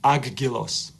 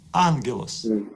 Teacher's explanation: If any of these letters follow gamma, this first gamma is pronounced as n.